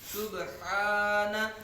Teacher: سبحان, ہا کو حلق کے درمیان سے نکالیں گے, ہا کی حلق کے درمیان سے بات نکالیں گے. سبحان, ہا کے اوپر کھڑا زبر ہے, ہا کی مقدار ایک الف تک یعنی 2 حرکات کے برابر کھینچ کے پڑھیں گے